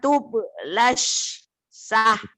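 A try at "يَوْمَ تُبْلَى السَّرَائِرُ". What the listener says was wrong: kenapa jadi sah lagi? Saro. Ibu udah bagus, cuman ibu terburu-buru. Kol-kolah ibu bener harus ditekan tuh. Jarang keluar tuh ya bu ya. Yauma tublas sarair. Tenang aja bu.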